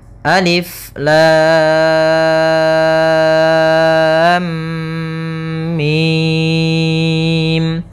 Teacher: mimnya termasuk mad lazim Harfi mukhaffaf yaitu kita panjangkan dengan panjang enam harakat